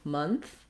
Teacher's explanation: So I'll rewrite that with a U for you, month, to help you think about that sound, keeping this, it's central, no rounding, nothing like an O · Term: vowel schwa